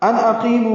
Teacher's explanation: ان اقیمو میں نون ساکن کے بعد حمزہ آنے کی وجہ سے اظہار ہے